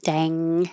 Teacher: Dang is the ng combination in the back of your tongue reaches the top of your mouth, dang, and forces the airflow through the nose.